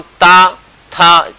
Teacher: नहीं तो आप बोल के देख लीजिए, आप ता बोल के देख लीजिए, बिल्कुल स्लो मोशन में ता बोले, आपकी जीभ आपके दांतों को स्पर्श करेगी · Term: दंत ध्वनि